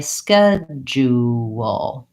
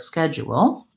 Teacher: in this pronunciation Americans will use three syllables and they'll say schedule again long short short